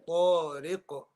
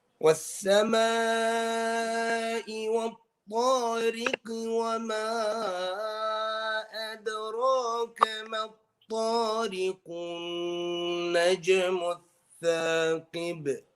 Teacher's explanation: this qalqala is going to be wadih, it's going to be clear. So so this will be qalqala kubra.